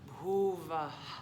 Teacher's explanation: And so it's not gonna just be bhuva. That H has the tiniest echo of the A. Bhuva. Not quite a bhuva ha.